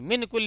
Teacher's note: یعنی نون کی آواز کو تھوڑا ناک میں چھپا کے بولیں گے، جیسے پنکھا بولتے ہیں، جیسے پنکھا، مان لیجیے پنکھا اگر بولیں ویسے من کل ایسے. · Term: اخفا